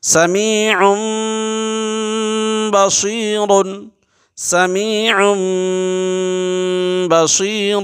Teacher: اس لیے کہ اس کے فوراً بعد با آ رہا ہے، اس لیے اس کے ان کی بجا ہوگا، یہ تنوین کی آواز نہیں آئے گی بلکہ میم کی آواز آئے گی